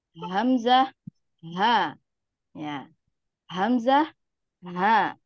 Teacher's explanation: tenggorokan di bagian paling bawah ya bagian bawah ini ada dua hurufnya yaitu huruf hamzah dan ha